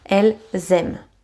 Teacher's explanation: the verb will end with E-N-T, E-N-T. But it is silent.